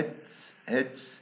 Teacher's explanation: التاء قبل الاس بسموه unaspirated، يعني ما بطلع مع هواء